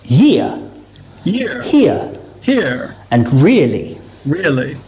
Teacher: The main physical difference between the sounds on the top row and the sounds on the second row is that your mouth should be a little more open for the second row sounds. So as you say ear, your mouth should open a little bit, starting on the I and finishing on the U, ear.